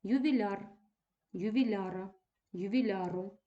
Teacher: наголос нібито приклеєний до суфікса